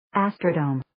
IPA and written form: 'æstrə,doʊm (Astrodome)